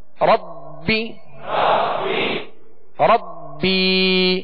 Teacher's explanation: ربی ربی، ایک الف کی مقدار میں کھینچ کر ادا کریں گے